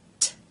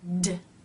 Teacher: T is unvoiced, meaning only air passes through the mouth, and D is voiced